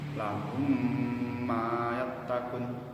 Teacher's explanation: Idgham mimi yakni apabila mim mati bertemu huruf mim, cara pengucapannya harus disertai gunnah juga. Seperti contoh kalimat lahum ma yattaqun, mim sukun bertemu mim.